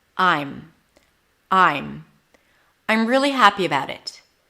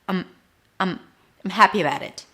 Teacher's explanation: First, we're going to talk about the only form that has am, and that's I am. And the am reduces to m. Basically, you reduce the vowel before.